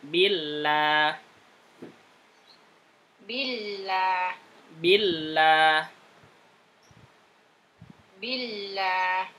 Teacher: Lamnya biasa saja, tipiskan.